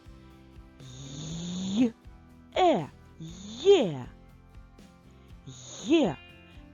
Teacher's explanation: це цілих два звуки які складаються з й приголосного м'якого звуку та е голосного звуку А ось звукосполучення й е на письмі позначається однією буквою є